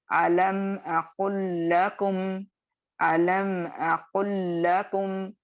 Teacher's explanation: लाम साकिन जो है वो लाम मुतहर्रिक में मर्ज हो जाएगा, और आप और मैं सिर्फ लाम मुतहर्रिक को पढ़ेंगे, लाम साकिन को नहीं पढ़ेंगे, क्योंकि यहाँ पे इदगाम ताम या कंप्लीट मर्जिंग हो रही है, और ये इदगाम सगीर भी होगा और ये इदगाम मुतमासिलैन भी होगा।